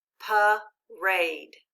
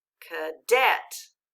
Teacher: so let's go ahead and look at our first syllable remember it's in the unaccented syllable and it's making a different sound so we're going to put a dot there to remind us that it says uh